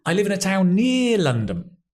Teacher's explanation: You probably still stress the word town, but less, because it's less important. Near is the key information.